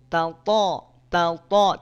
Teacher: th ta th tidak perlu maju tidak perlu monyong bibnya karena tebal itu bukan dari bibir tebal itu dari pangkal lidah yang naik · kalau dari makhraj sama-sama dari ujung lidah bertemu dengan pangkal gigi seri atas